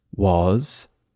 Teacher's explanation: the letter S on paper but when we say it it sounds like a z